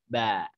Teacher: Ba 2 bibir ditempelkan terus tidak ngalir nafas. Ba, sekedar bunyi B, bukan B.